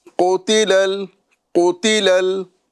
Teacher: कौफ को पुर करना है और ता को बारीक करना है। ऐसा ना हो कि कौफ पुर करते-करते आप ता को भी पुर कर दें और ता अगर पुर होता है तो ये ता त में तब्दील हो जाता है। · قاف کو پر کرنا ہے اور تا کو باریک کرنا ہے